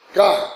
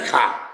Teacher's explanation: अल्प प्राण से महाप्राण हो जाता है, का से खा हो जाता है।